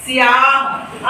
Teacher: सा जो है या में समाहित हो रहा है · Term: आधा अक्षर